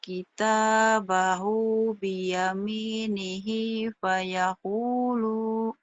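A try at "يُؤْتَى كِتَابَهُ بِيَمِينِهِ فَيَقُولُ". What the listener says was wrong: Lo-nya pendek. Pendek lo-nya ayo.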